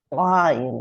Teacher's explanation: I am pronouncing it like an Aleph that comes from deeper in the throat. Ayin, like a hard Aleph.